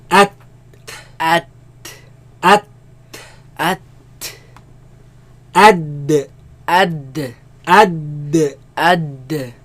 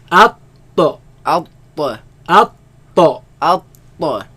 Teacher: They all come from front flat part of the tongue, right, which is called taraful lisan, against what? Against the root of the upper teeth.